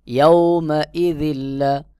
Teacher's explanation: তানবিনের পরে লাম, এখানে ইদগাম হবে, তানবিন বাদ হয়ে এক জের উচ্চারণ করে পরের হরফ লামকে মিলাই পড়তে হবে।